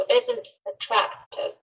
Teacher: isn't▁里的这个▁t▁是辅音，后面的▁attractive▁啊又是元音的，所以这里面也可以做一个连读